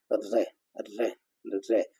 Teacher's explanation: हमारी जीभ की टीप ऊपर वाले दांत है उनकी जड़ में जाकर टकराती है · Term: दंतमूल